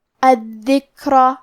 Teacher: آخری میں ہمیں را کو موٹی آواز میں پڑھنا ہے کیونکہ اس پہ زبر ہے · کلمت الذکر میں دال کے تشدید کو ظاہر کریں گے